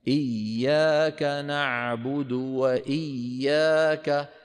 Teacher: إذا ندغم الياء في الياء ولا نقطع صوتها